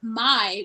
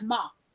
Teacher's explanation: with African American English, don't sing a diphthong. So diphthongs become monophthongs, and that's why we don't have my, we have ma.